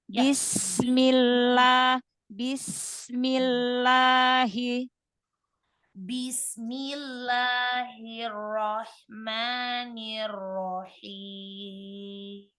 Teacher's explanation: sin sukun punya sifat rokhawah ketemu dengan mim yang berharokat, maka sin sukun temponya lebih panjang. Panjangkan huruf sinnya, sin sukunnya, rokhawahnya.